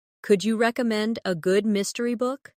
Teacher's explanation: Notice how the stress naturally falls on recommend and mystery.